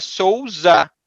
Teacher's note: when the s is in the middle we say like a z